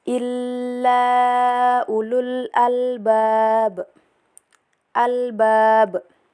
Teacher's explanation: ba berada di akhir kalimat dibaca ee dipantulkan dengan jelas dan keras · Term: qalqalah kubra